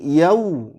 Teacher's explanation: Benar-benar bibir kita itu bulat, yau, ya, supaya menghasilkan suara u. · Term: lin